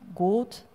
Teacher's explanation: It's a more of a single long vowel instead of a diphthong-like thing